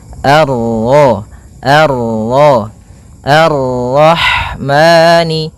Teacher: Maka kita baca dengan bacaan al sebagaimana yang di atas al. Kemudian ini bertemu dengan huruf ro yang berharakat tasydid. Maka rnya kita baca dengan tafkhim.